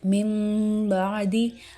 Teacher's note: اقلاب کرتے ہیں، یعنی اس نون ساکن یا تنوین اس کے ساتھ جو ہے ہم میم ملاتے ہیں، میم کے ساتھ آواز لاتے ہیں، میم کی آواز کے ساتھ اس کو بدلتے ہیں